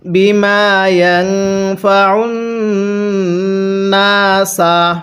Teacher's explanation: আইনটা পড়ার সময় গলার মধ্যে চাপ দিয়ে পড়ব